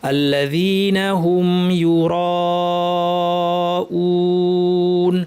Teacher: র ভারী, রয়ের সাথে টানটাও ভারী হবে।